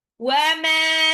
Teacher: Wa ma, mimnya panjang 2 harokat.